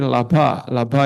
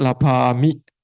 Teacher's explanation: Contohnya di sini laba ini a-nya a pendek ya. Tapi ketika dia bertemu wibhatinya adalah mi, maka dia menjadi laba mi, a-nya jadi a panjang.